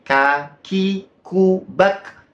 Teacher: memiliki sifat istifal maksudnya adalah merendah pangkal lidah itu gak naik